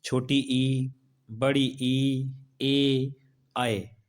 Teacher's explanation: अग्र स्वर इसलिए कहते हैं क्योंकि इन स्वरों का उच्चारण जिह्वा के अग्रभाग से होता है